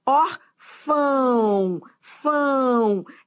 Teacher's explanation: esse o tem som de u